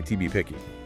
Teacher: It might sound like ta, or in this case, the T sound links with the next word's vowel and becomes very short